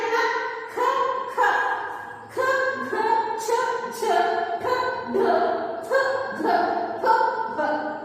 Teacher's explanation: ಉಸಿರನ್ನ ತೆಗೆದುಕೊಂಡು ಉಚ್ಚಾರ ಮಾಡಿದಂತಹ ಅಕ್ಷರಗಳನ್ನೇ ನಾವು ಮಹಾಪ್ರಾಣ ಅಕ್ಷರಗಳು ಅಂತ ಹೇಳಿ ಕರೀತೀವಿ ಈ ಅಕ್ಷರಗಳ ಉಚ್ಚಾರ ಮಾಡೋದಕ್ಕೆ ನಾವು ಹೆಚ್ಚು ಉಸಿರನ್ನ ತಗೋಬೇಕಾಗುತ್ತೆ ವರ್ಗದ ಎರಡು ಮತ್ತು ನಾಲ್ಕನೇ ಅಕ್ಷರಗಳು ಏನಿದಾವೆ ಇವುಗಳನ್ನೇ ನಾವು ಮಹಾಪ್ರಾಣ ಅಕ್ಷರಗಳು ಅಂತ